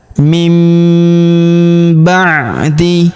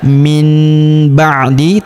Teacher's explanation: nun sukunnya melebur ke huruf ba, nun sukunnya berubah menjadi mim ya. Kemudian kita tahan dan kita dengungkan 2-3 harokat.